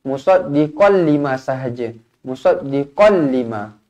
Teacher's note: Tanwin tak selari bertemu dengan lam, idgham bila gunnah. Okey, idgham bila gunnah, la gunnah, tak dengung. Jadi bacanya qallima.